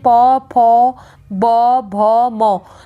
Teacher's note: जो ध्वनियाँ दोनों होठों के स्पर्श से उत्पन्न होती हैं उन्हें क्या बोलते हैं, ओष्ठ्य व्यंजन बोलते हैं